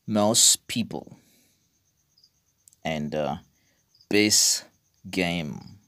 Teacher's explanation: alveolar stops, they get reduced or omitted. It means they don't have pronunciation when they come in between two consonants.